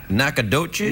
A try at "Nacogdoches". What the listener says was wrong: No, it's pretty close. Nacogdoches. It's plural.